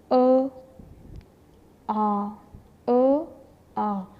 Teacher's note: अब मुंह तो खुला है अ में कम है आ में ज्यादा है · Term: विवृत